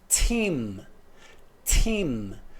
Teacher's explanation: O som do T é produzido, bloqueado lá na parte alveolar.